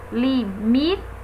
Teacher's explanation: percebemos que a sílaba forte é mi apesar de não estar graficamente é acentuada apenas pela pronúncia a